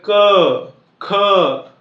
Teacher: अगदी मागची बाजू जी आहे जिभेची ती वरती कंठाला थोडीशी दाबते